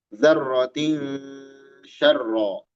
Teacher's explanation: Tanwin menghadapi syin. Ini ikhfa hakiki. Ikhfa dibaca samar.